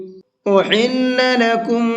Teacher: یہ بڑا ہا ہے، اس کو حلق سے نکال کر کے پڑھیں گے، کیونکہ اگر یہ چھوٹا ہا سے ہو جائے گا تو اس کے معنی بالکل بدل جائیں گے، اس لیے اس چیز کا خیال کرنا ہے اور بڑا ہا نکالنے کی کوشش کرنا ہے۔